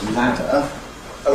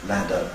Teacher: It's surrounded by voiced sounds, ‘ladder’ /ˈlædə/. And if you investigate the activity of the vocal folds, you typically find that they’re vibrating throughout, so you've been taught to draw parametric diagrams of that kind where we see full vibration of the vocal folds during the whole phase of the word ‘ladder’. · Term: fully voiced